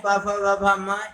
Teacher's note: इनका उच्चारण स्थान ओष्ठ है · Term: पा वर्ग